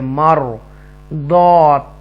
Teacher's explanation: یہاں پر راہ کو تفخیم کے ساتھ پڑھیں گے کیونکہ را ساکنہ سے پہلے زبر ہے